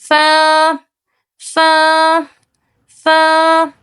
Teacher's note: تو جب نیچے والے ہونٹ کے اندرونی حصے سے ثنایا علیہ یعنی اوپر کے سامنے والے دو دانتوں کے کنارے لگیں گے تو حرف فا ادا ہوگا